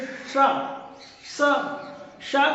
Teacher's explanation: उच्चारण स्थान जो है जैसे श का उच्चारण बोलेंगे स स श का मतलब है जो आपकी तालू से जीभ छूती है श सीटी की ध्वनि आती है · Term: तालव्य